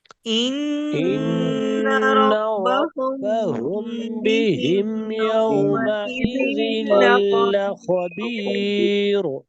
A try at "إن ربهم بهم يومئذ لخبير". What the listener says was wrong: नहीं रा को मोटा नहीं पढ़ो ये बरी करा बक की हालत में إن ربهم بهم يومئذ لخبير